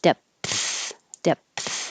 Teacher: and let the air flow out with the th depth depth if you don't stop the airflow with a p it will sound like death · You do have to close your lips and make a P to stop the airflow before you open your lips again and let the airflow out with the TH.